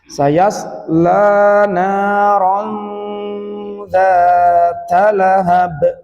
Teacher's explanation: Tidak nun naron atau naron ya zal, tapi peralihan dari nun ke zal itu cara membaca ikhfa. Ya, dibacanya samar ya. Sayasla naron dzata lahab.